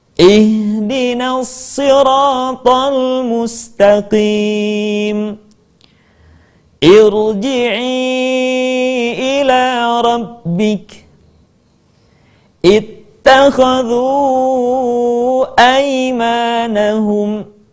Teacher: Dan yang ketiga, hamzah wasal dibaca dengan harokat kasrah manakala tidak ada unsur pertama yaitu lam dan unsur yang kedua yaitu huruf yang pertamanya bukanlah u. Maka kemudian hamzah wasal dibaca dengan harokat i.